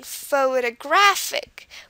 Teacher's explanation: the stress is on the graph part because that's the most highly accented